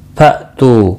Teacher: हमजा साकिन को झटकी के साथ पढ़ेंगे। तू वाव मद्दा है, 1 अलिफ के बराबर खींच कर पढ़ेंगे।